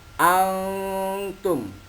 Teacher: antum ini bacaan ikhfa. Cara membacanya yaitu disamarkan.